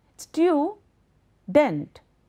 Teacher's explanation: It is student, student. Two syllables are there. Student. So the first is stressed